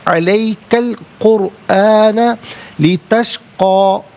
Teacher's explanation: قرآن میں را ساکن ما قبل قاف پر پیش ہے، را ساکن کو پر کر کے پڑھا جائے گا